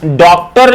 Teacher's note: डॉक्टर में ओ का आधा उच्चारण किया जाता है।